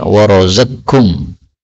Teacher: Ini qaf ketemu dengan kaf, boleh idgham menjadi warazaqkum.